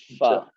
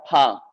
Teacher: اوپر کے دانتوں کا کنارہ نیچے کے ہونٹ سے مل کر فا ادا ہوتا ہے